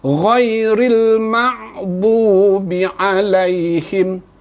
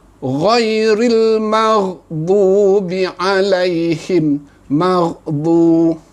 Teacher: Kita mungkin membacanya dengan bunyi ain yang mati.